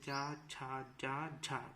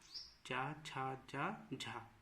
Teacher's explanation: और संघर्षी इसलिए बोलते हैं क्योंकि ये संघर्ष के साथ निकलते हैं बड़ी कठिनाई से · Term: स्पर्श संघर्षी